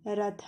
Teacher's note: ಮೊದಲಿಗೆ ಬನ್ನಿ, ರ ರಥ, ಮಹಾಪ್ರಾಣಾಕ್ಷರ ತ ಅನ್ಬಾರ್ದು, ಥ ರಥ